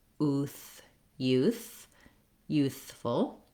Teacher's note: you have to put your tongue between your teeth and get that voiceless TH sound